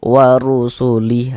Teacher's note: huruf ra dibaca tebal, dibaca tafkhim, sehingga pangkal lidah kita terangkat ke atas saat mengucapkannya